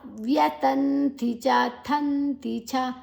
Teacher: ಥ ಮಹಾಪ್ರಾಣ ನಂತರ ಅನುಸ್ವರದ ಉಚ್ಚಾರಣೆ ನ